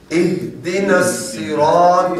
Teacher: یہاں جو ہا ہے یہ حلق والی نہیں ہے، یہ سینے والی ہا ہے